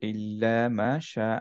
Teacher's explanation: হা হচ্ছে হামস letter হামসের বাতাস বের হতে হয়